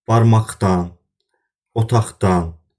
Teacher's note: Əgər həmin sözə samitlə başlanan şəkilçi artırırıqsa, yenə də yazılış olduğu kimi qalır, deyilişdə q səsi x səsinə çevrilir